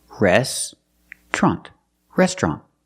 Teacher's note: now let's look at this word it's not restaurant it's restaurant we don't pronounce it with three syllables we pronounce it with two syllables restrant restaurant we put the TR together to make the sound